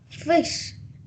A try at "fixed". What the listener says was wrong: Okay, with T sound again at the end.